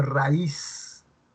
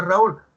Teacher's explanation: porque la vocal cerrada es tónica, suena con más fuerza